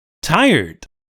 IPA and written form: ˈtaɪərd (tired)